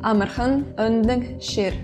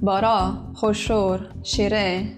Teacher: A very important pronunciation rule in Mongolian is that in the word, all vowels, except for the first one, get reduced to almost disappearing completely